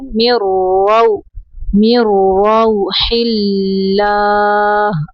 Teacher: ولا تیأسوا من روح اللہ، میم زیر را، مر، یہاں پہ نون کو نہیں پڑھیں گے، میم کو را کے اندر ملائیں گے · اللہ کا نام یہاں پہ باریک پڑھنا ہے کیونکہ اللہ کے نام کے پچھلے حرف کے نیچے زیر ہے